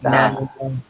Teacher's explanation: জিহ্বার আগা উপরে দাঁতের গোড়াতে লাগছে। স্পর্শ। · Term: তায়ের মাখরাজ